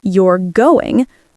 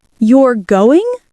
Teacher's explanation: If I say it with a fall, You're going, it's a statement. · If I rise, You're going, it's a question.